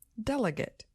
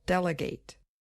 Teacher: the noun form just has stress on the first syllable delegate but the verb form also has a little stress on the last syllable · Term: secondary stress